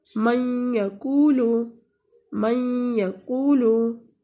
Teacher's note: یہاں پہ ہمارے پاس یمنو حروف کی مثالیں ہیں کہ جب بھی یمنو حروف کے بعد نون ساکن آ جائے یا تنوین آ جائے تو ہم ادغام کریں گے غنہ کے ساتھ، یعنی نون کو اس یمنو حروف میں ادغام کریں گے، ملا کر پڑھیں گے اور آواز تھوڑی سی ناک کے اندر جائے گی اور گنگنی آواز کے ساتھ ادائیگی ہوگی